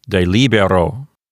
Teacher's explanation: So there's nothing making the penult into a long syllable here. So the penult is not long, and so the accent moves over to the antepenult, which is LI. So this word will sound like de libero.